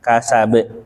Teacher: Jadi menutupnya dengan hamzah karena ditekan. Solusinya jangan ditekan, ngalir aja. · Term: qalqalah kubro